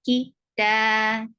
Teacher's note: ta is 2 counts long because this standing fatha is just like alif